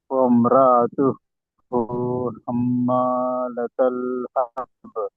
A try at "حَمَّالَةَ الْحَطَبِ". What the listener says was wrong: లతల్. ఇలా దీర్ఘం తీయవద్దు. లతల్ హతబ్ త్వరగా రావాలి.